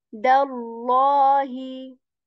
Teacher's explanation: dal letter, the light letter, tip of the tongue touches the back of your upper teeth, the sound, dallahi.